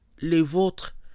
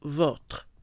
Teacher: Without the accent, O is more open